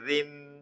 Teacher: را کے نیچے دو زیر ہو را کو باریک پڑھیں گے